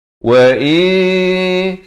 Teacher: asalnya memang bunyi in, tapi datang jim jadi wa in, disamarkan 2 harakat